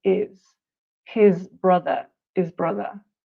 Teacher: You often don't hear the H at all.